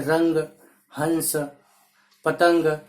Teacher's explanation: इसके उच्चारण में ध्वनि केवल नाक से निकलती है। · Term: अनुस्वार